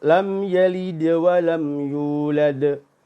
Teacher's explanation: tidak boleh ditutup dengan suara hamzah. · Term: qalqalah